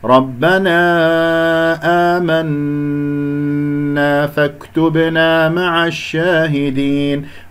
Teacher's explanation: ربنا آمنا مد بدل في كلمة آمنا، ألف ساكن قبل همزة مفتوحة، النون المشددة الغنة أكمل ما تكون